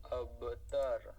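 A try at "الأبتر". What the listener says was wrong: আবতার, তার এরকম টান দিবেন না। আবতার।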